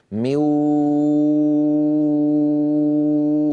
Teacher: ادغاما في الواو والياء من غير غنه · ادغم منو لكنه ما اتى بالغنه كل الصوت عم ياتي من فين من الفم مو مو مو ها انا الان اسد انفي وافتحه والصوت لا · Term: صوتا فمويا من غير غنه